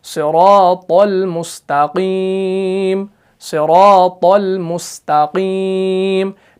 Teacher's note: سین باریک صاد موٹا، کیوں؟ کیونکہ اس کے اندر صفت اطباق ہے